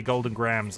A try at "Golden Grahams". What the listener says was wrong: I think you're supposed to pronounce the H like Graham. Graham crackers.